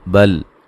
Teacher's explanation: بل ہلانا نہیں، لام کو ہلا کے نہیں پڑھنا ہے۔ یوری را کو باریک پڑھیں گے، یا مدہ ہے۔